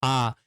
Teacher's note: जब आप इसे बोलते हैं आ, तो आपका पूरा मुख खुला होता है, तो यह क्या हो जाएगा, यह आपका विवृत हो जाएगा, यह समृत नहीं होगा।